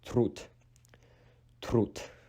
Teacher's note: When D is placed at the end of a word, it is pronounced as T